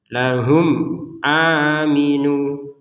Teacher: a-nya panjang 2 harokat karena harokatnya berdiri